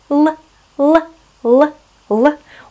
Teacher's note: Следующий звук у нас Л. Располагается он, помним, на верхних альвеолах.